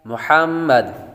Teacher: میم مشدد پر ہمیشہ غنہ ہوتا ہے